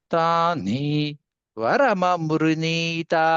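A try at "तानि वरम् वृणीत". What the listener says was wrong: వరమ వృణీతా దీర్ఘం చెప్పాలి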